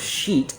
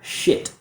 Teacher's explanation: A lot of students mispronounce this word because of the vowel sound. So instead of using the E like she, a lot of students will use I like sit. So instead of sheet, we hear shit, which is something that we do in the bathroom and also could be considered a rude word.